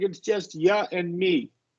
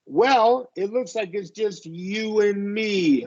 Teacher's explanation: we're going to emphasize the W because we're closing oo